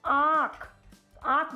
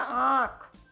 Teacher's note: आँख बोल के देखिए तो आपके नाक से भी साउंड आएगा, आँख। इसीलिए जहाँ भी आपके नाक से भी साउंड आए वहाँ पे अनुनासिक मात्रा होती है, यानी चंद्र बिंदी होती है।